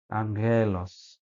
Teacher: huruf gamma yang bunyinya nasal seperti huruf bunyinya N tadi disebut gamma nasal.